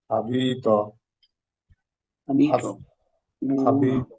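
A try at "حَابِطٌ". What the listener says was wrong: এই হা কিন্তু গলার মাঝখান থেকে উচ্চারণ হওয়ার কথা, আপনাদের অনেকেরই হচ্ছে না। আপনারা অবশ্যই চেষ্টা করে এটাকে গলার মাঝখান থেকে আনার চেষ্টা করবেন।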